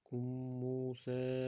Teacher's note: Kummusa ozroq g'unna bilan o'qiymiz.